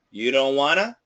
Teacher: N is going to cancel the T just like wanna, want to wanna, and it's going to be don't wanna. No t. You don't wanna. · the typical pronunciation, that N is going to cancel the T